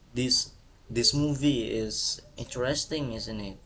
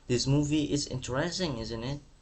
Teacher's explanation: Kemudian nadanya di akhir kalimat tuh turun. · dia nadanya turun atau bisa disebut falling intonation.